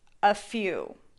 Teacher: a few is often linked to sound like a single word a few the stress is on the second syllable the vowel